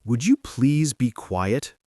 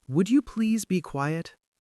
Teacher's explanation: When you make a request with would, your voice should usually go up at the end. It should sound soft.